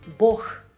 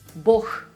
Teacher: An exception would be the Russian word for God, Бог. Here, g turns into a h